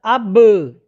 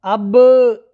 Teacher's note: جب بھی یہ ساکن ہوگی با تو اس کو ہلائیں گے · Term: حروف قلقلہ